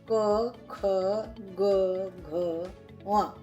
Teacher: इनका उच्चारण जो है कंठ से यानी कि गले से होता है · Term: क वर्ग